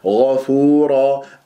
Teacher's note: وكان ما الله خطأ، وكان ن، وكان الله، الله، وليس الله، لا تكور الشفاء. غفورا، الغين مفخمة مرتبة ثانية مفتوحة، الفاء مرققة مضمومة نضم الشفاء فيها، بعدها واو ساكنة من الطبيعي حركتين، الراء مفتوحة تنوين فتح مفخم الراء مع راء رحيمة إدغام بغير غنة.